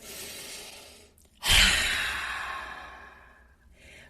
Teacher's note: when we make that ha sound coming out our mouth, that actually creates a gentle narrowing in the back of the throat. It's just naturally what happens.